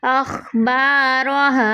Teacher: را زبر کی صورت میں پر پڑھا جاتا ہے